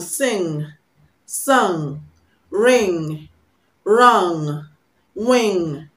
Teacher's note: Ng is a nasal sound. It's pronounced through the nose.